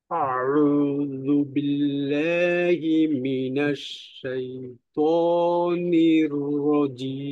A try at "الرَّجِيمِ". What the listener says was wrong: শেষে মিমের আওয়াজ আপনি যতটা রাখলেন আর একটু ছোট রাখবেন। হ্যাঁ, আর একটু কম বলতে মনে করেন যে আওয়াজটা কোনো মতে একটু চালু রাখা, যেন মাখরাজে যাওয়ার সাথে সাথে বন্ধ না হয়, বাস এতটুকু,